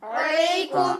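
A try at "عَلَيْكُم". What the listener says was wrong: عین کی ادائیگی صاف کیجیے.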